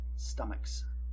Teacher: But it does not exist. Our word is pronounced stomach, a K sound. So unvoiced, your S will be unvoiced, stomachs. Still two syllables, stomach, stomachs.